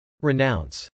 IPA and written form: rɪnˈaʊns (renounce)